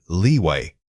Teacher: When you hit that long e sound in leeway, ensure your lips are fully spread. This sustained tension helps differentiate it from the short vowel.